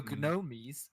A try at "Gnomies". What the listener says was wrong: It's the Gnomies. Silent G.